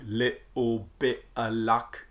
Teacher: The way the T's especially can turn into a glottal stop in the middle of a word or at the end of a word